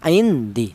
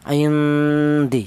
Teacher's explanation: Cara bacanya nun matinya ini disamarkan atau dibaca ikhfa